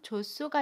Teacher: 받침 히읗과 첫소리 자음 시옷이 만나면 두 음이 합쳐져서 쌍시옷으로 발음해요. 그림으로 보면 받침 히읗과 첫소리 자음, 시옷이 만나면 받침 히읗이 다음에 오는 첫소리로 이동을 하고요.